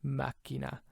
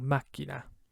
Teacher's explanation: remember that C is doubled, so you hold it out twice as long.